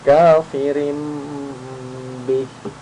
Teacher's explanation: tanwin bertemu dengan ba, maka mulutnya membentuk huruf mim. Bukan membentuk huruf mim ya, tapi makhrajnya huruf mim.